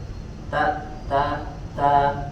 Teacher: Ada huruf yang pertama, ada huruf ta, yang huruf ta fathah, yang dibaca tipis, kemudian dia dibaca dengan makhraj, ujung lidah kita menempel ke bagian gusi gigi seri bagian atas, ya. Ta, ya, dan dia memiliki sifat hams, yang memiliki sifat hams, di mana juga sifat hams ini dibaca disempurnakan juga dengan tidak berlebihan.